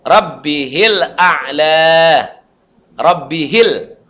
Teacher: Rabbihil, langsung mati dia. Ya, haknya udah nggak panjang lagi. Fatanfa'uhu dzikra.